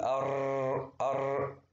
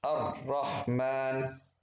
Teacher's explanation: يعني بكررها مرة ونص فقط. فبنتعلم صفة التكرار لتجنبها.